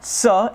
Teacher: sa is a dental, right? More involving the teeth